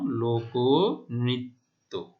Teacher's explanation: মাঝখানের অ এর উচ্চারণ ও এর মতো হয়েছে, এই যে আমরা দেখতে পাচ্ছি অ ওকার। · মধ্য অ এর পর রিকার থাকলে সে মধ্য অ এর উচ্চারণ সংবৃত বা ও এর মতো হয়। তাহলে মধ্য অ এর উচ্চারণ রিকার, মধ্য অ এর পরে রিকার, তাহলে মধ্য অ এখানে ক তারপরে রিকার রয়েছে, সে তাহলে কি হবে, মধ্য অ এর উচ্চারণ ও এর মতো হবে।